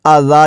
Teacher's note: آ گیا ہے تو مد منفصل ہے، مد کرتے ہوئے اذا، جب وقف کریں گے تو اذان کو اذا پڑھیں گے